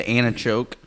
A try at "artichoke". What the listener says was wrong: Artichoke or antichoke? You said antichoke.